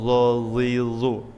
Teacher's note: Dan za itu sedikit agak dibulatkan mulutnya karena bersifat isti'la.